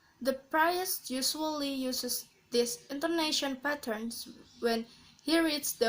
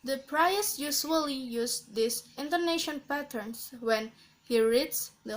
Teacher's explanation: And the last types is level intonation. Level intonation is characterized by no or very little pitch modulation throughout a sentence.